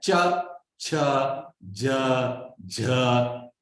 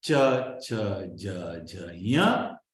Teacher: When you say cha, conscious of it, where is the tongue resting? On the ridge, that palate behind your teeth, not on your teeth, but the palate behind your teeth. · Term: talu